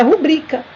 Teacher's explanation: nós temos aí a força no I na segunda sílaba, uma palavra paroxítona, que não há regra para ser acentuada. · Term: acento prosódico